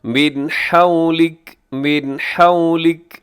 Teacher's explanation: من میں نون ساکن ہے، نون ساکن کے بعد حا ہے تو یہاں پہ اظہار حلقی